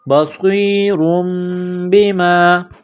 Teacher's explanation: تنوین کے بعد با ہے تو یہاں پر اقلاب کریں گے، آواز ناک میں چھپائیں گے